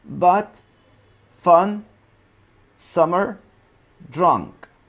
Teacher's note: معناها ان الشفتين بتكون completely relaxed, مرتخيتين, slightly parted, منفصلتين عن بعض. The tongue is relaxed and it's in a middle position. And in a middle position, feel the letter U, as in but, fun, summer, drunk.